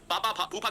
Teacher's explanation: और ये दोस्तों पा वर्ग यानी जिसका स्पर्श व्यंजन, जिसको वायु होठों से स्पर्श करते हुए निकलती है, होठों से टच करके जाती है, वो ओष्ठ है। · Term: ओष्ठ व्यंजन